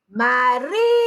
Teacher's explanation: Eu tenho uma sílaba, uma palavra polissílaba, porque ela tem mais de 3 sílabas. A sílaba tônica é o ri, marítima. E ela vem só até aqui, até as 3 sílabas do final para o início da palavra.